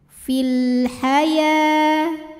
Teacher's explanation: Kemudian alif lamnya dinamakan dengan alif lam qomariyah karena alif lam menghadapi huruf qomariyah yaitu huruf ha. Maka lam sukun dibaca dengan jelas atau disebut dengan izhar qomari.